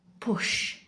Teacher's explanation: Your throat should be silent, no vibration, just your lips pressing together, then bursting open with air.